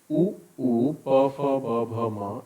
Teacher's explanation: इनका उच्चारण स्थान ओष्ठ और इनको ओष्ठ व्यंजन वर्ण बोलते हैं